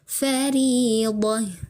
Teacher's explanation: kita sukunkan saja ta marbutahnya, kita ubah bunyi ta marbutah menjadi seperti huruf ha ya, fariḍah ya, begitu.